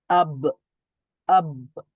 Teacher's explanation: সেখানে আওয়াজ জারি থাকবে না যেমন এখানে রয়েছে কি আব মানে ব সাউন্ডটা শেষ থেমে গেছে কিন্তু কলকলা হওয়ার কারণে সেখানে আবার হয়তোবা রিপিট সাউন্ড হতে পারে কিন্তু প্রথম সাউন্ডটা থেমে গেছে শ্বাসটা বন্ধ হয়ে গেছে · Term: জেহের